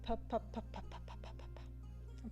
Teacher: explosive p sound blows a puff of air at the microphone which washes out the voice